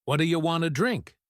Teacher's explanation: The do you becomes ya. Want to becomes wanna.